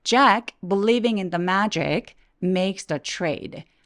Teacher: 문장 끝날 때는 trade 하면서 목소리 뚝 떨어지면서 끝난 느낌을 내주세요